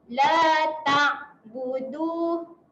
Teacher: huruf ain kena tahan. Jangan lantunkan.